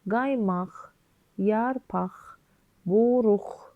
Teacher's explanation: Qaymaq, yarpaq, buruq hamısında x-ni ifadə edir